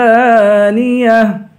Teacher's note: عین کو زا سے ملا کر زا کو سختی کے ساتھ جمع کے پڑھیں گے